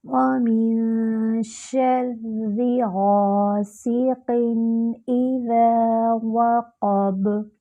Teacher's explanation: واو میں ہونٹوں کو مکمل گول کریں گے